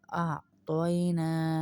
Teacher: نون کھڑا زبر نہ ہے تو اس کو تھوڑا سا کھینچیں گے